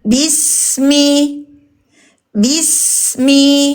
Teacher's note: Huruf ba berpokal i. B ketemu huruf sin mengalir. Ujung lisan kita ke gigi bawah.